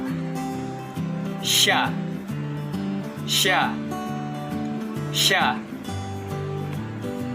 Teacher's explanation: konsonan lamino-palatal geseran tak bersuara